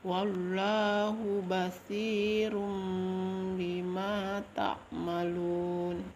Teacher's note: mengubah suara n menjadi m atau iklab